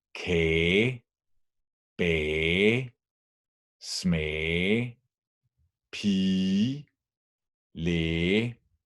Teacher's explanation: The pronunciation focus of today is vowel plus GE, vocal plus GE. Whenever we have a vowel plus GE in normal spoken Danish, the GE disappears and the vowel in front is prolonged, as it is in Kage, Bage, Smage, Pige, Læge.